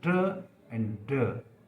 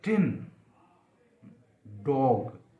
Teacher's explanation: तो tip of the tongue हमारी teeth रिच पे स्ट्राइक कर रखी है।